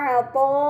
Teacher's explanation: terdapat mad bertemu hamzah bukan dalam satu kata, dinamakan mad munfasil, maka harus dibaca panjang selama 4 atau 5 harokat